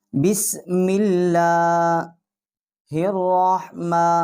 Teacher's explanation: کے ساتھ ہم اس کو ہا کو مشدد کریں گے، اور را جو ہے اس کو ہم منہ پر کر کے پڑھیں گے، موٹا کر کے پڑھیں گے